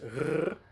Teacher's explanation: in Dutch the R is pronounced as a rolling R. I have the R in the back of my throat, so that is R.